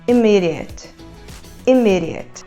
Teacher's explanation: ela começa com aquele som de vogal que fica no meio do caminho entre a letra E e a letra I